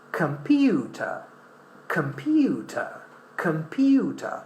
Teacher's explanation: this O is pronounced as in a weak form